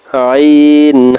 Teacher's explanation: দুই নাম্বার মাখরাজ হলকের মধ্যখান হইতে